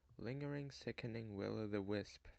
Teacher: features three dactyls and one stressed syllable to strengthen the end · its pattern is long short short it has quite a valiant Galloping Rhythm to exemplify lingering sickening will of the Wisp features three dactyls